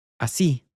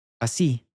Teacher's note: You can hear the stress coming on the end here.